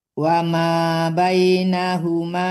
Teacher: Wama bainahum enggak boleh dimatikan, panjang ma-nya.